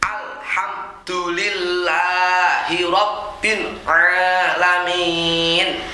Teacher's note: Rabbil ini ba tasdid harus langsung ditekan dan jangan sampai mulur. Jangan rob, nggak boleh.